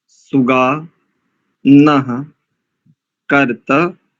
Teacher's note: यहाँ पर नकार के उपरांत जो विसर्ग है और पश्चात ककार है तो यहाँ जिह्वामूल्य हो जाएगा